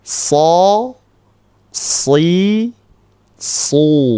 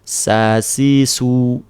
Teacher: huruf shad ini sebetulnya sama persis 99,9% sama dengan huruf sin. Bedanya apa? Bedanya ini tuh lebih tebal.